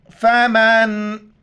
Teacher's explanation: نون ساکن وہاں پر اخفا مال غنہ، ناک میں آواز چھپائیں گے. ف زبر ف، میم نون زبر من، فمن.